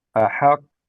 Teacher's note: قاف حرف مشدد موقوف عليه. حرف مشدد موقوف عليه. مع القلقلة.